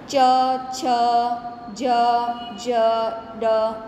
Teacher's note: તાલવ્ય વ્યંજન એટલે કે બોલતા જીભ તાળવે અડે છે.